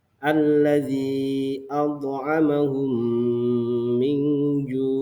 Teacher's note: mim yang pertama dimasukkan ke mim yang kedua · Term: idgham mitlain, idgham mithlain